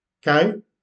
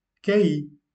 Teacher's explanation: Le hiatus, on fait une séparation. Donc dans ce cas, chaque voyelle appartient à une syllabe différente. Donc on appelle cela un hiatus.